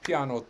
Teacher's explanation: a piano word where the next to last syllable is long the penultimate syllable